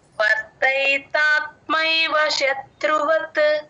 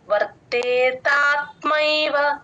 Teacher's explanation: ఐ ని join చేసుకుంటే మీకు మీకు ఐకారం క్లియర్ గా వినిపిస్తుంది